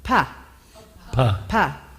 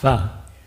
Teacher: So the difference is just you put a little teeth on your lip and you turn the aspirate pa into what we call in English an F sound